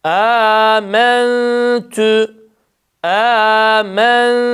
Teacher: Ağzımızı hemzede açtık. Ihfayı tam ince yapıyoruz. T harfinde dudaklarımız tam ileride oluyor.